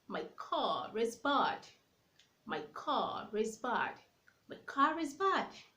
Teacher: I can link the R to the vowel, saying my car is bad. That is called linking R.